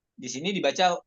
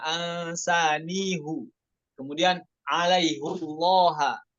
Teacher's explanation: Karena di riwayat lain bisa dibaca ansanihi ataupun alaihillah ya. Di sini dibaca dhammah semuanya.